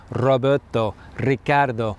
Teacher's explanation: Spanish words that begin with the letter R, even if it's not the double R, also have that trill sound as well.